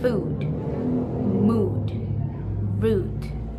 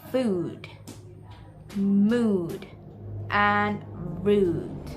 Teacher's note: vowel sounds that are produced by using the back part of the tongue raised into the direction of soft palate or velum. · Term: high back rounded vowels